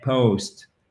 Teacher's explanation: nous avons un O, mais sous forme de diphtongue.